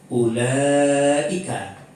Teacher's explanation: Setelah dia mad tabi'i, terdapat sesudahnya huruf hamzah yang berhakat, maka dibaca panjang 3 alif atau 6 harkat. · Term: mad wajib muttasil